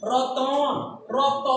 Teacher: ত এর পর একটা অ আসে